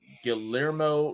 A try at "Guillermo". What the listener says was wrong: It's Guillermo. The L's are silent.